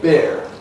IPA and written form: bɪr (beer)